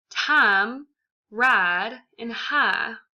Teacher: SAE has distinctively taken words traditionally with the diphthong and transformed them into monophthongs, completely altering the pronunciation of words again. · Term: glide deletion